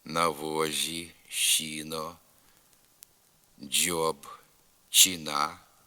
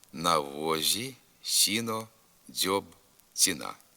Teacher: у літературній мові приголосні з с ДЗ ц вимовляються не дуже м'яко і без шиплячого призвука